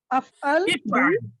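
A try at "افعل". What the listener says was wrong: If'al from kasra. If'al.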